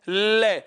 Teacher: ले को आप कितनी देर तक बोल के देखिए, जब तक आपकी जीभ ऊपर रहेगी हवा किनारों से या साइडों से बाहर आएगी, बगल से बाहर आएगी। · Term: पार्श्विक वर्ण